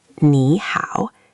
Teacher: Imagine drawing a little V with your voice. · dip and then a slight rise in your voice. So, it goes down and then up. Try to scoop it.